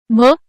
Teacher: भ या वर्णाचा उच्चार ओठांच्या सहाय्याने होतो त्यामुळे तो ओष्ठय वर्ण आहे